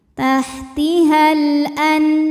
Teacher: Maka lam sukun dibaca jelas atau disebut dengan idhar qamari.